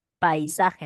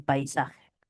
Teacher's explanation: Aparece la vocal cerrada después del núcleo de la vocal, se le llama semivocal.